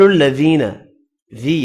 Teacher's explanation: یا مدہ ہے ایک الف کی مقدار میں کھینچ کر پڑھیں گے